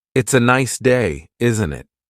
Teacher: The tone going up at the end tells the listener that you're asking a question. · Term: intonation